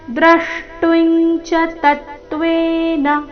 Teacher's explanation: ಚರಣದ ಕೊನೆಗೆ ನ ರಸ್ವ ಅದರ ಮೇಲೆ ಆಘಾತ ಕೂಡ ಬರಬೇಕು